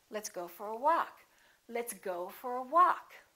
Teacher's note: Go gets some stress, but walk gets a lot more stress.